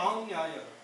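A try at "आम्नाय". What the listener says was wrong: Where is nya? Enakshara samamnayam. Some people chant samam nyayam. Samamnayam. That is what is the word. Amnaya.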